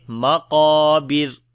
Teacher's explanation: مقابر، را کو باریک پڑھیں گے کیونکہ را کے اوپر جب رکیں گے تو را کے اوپر جزم آ جاتی ہے اور اس سے پہلے زیر ہوگی تو را باریک پڑھی جاتی ہے، تو پڑھیں گے مقابر۔